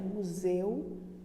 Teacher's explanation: já em museu a minha boca não se abre tanto quanto ela se abre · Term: ditongo é fechado